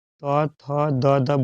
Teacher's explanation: त थ द द बोलिएगा तो दांत में जाके सटेगा जबान, तो दंत से आवाज आएगा